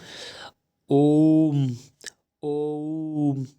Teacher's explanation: ओम ये स्वर जो है वो त्रैमात्रिक है, जिसका प्रयोग प्राय वेदों में होता है। यहाँ ओ जो है वो प्लुत स्वर है।